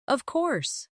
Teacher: When they are certain, their voice goes down strongly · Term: intonation